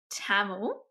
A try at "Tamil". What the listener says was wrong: It's not Tamu, it's Tamil. Tamil. The sound is different, but